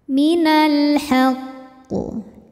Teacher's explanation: alif lam menghadapi huruf qamariah yaitu ha maka lam dibaca izhar atau jelas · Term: alif lam qamariah